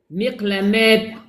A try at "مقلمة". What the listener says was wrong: Non. Ta, je répète, se prononce comme ha. Ha de hello. Ha, il y a de l'air qui sort. Miqlamah.